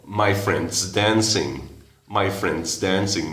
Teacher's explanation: el está se disminuye solo a una S nomás